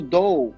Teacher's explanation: O D ele é plosivo, curto e atrás do dente.